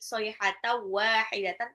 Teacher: In kanat nun sukun ketemu kaf itu adalah ikfa, kafe 2 harokat ya, matabi'i illa lamnya matabi'i soihata wahidatan, tanwin ketemu waw itu adalah idgham bil gunnah ya, dilebur dan ditahan